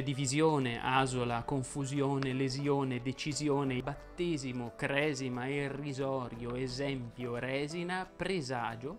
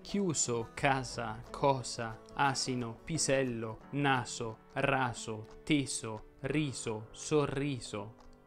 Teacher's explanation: Infatti, amici del meridione, la S si pronuncia sonora in genere quando cade tra due vocali. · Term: S sonora